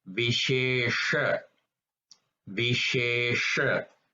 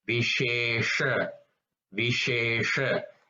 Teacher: If you notice that second sha is a little bit rolled, you roll your tongue and you say that.